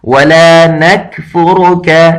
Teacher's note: وَلَا ایک الف کے برابر لمبا ہے اور آگے نَكْفُرُكَ اور یہاں صرف را موٹا کر کے پڑھا جاتا ہے باقی سارے کے ساری باریک پڑھے جاتے ہیں